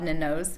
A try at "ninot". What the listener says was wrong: Almost. It has a T in it. Ninot. In Valencia, T's are never silent.